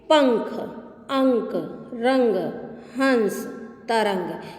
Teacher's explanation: अनुस्वार, इसका उच्चारण नाक से किया जाता है